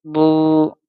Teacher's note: واو مدہ ہے اس لیے ہم اس کو ایک الف کے برابر کھینچیں گے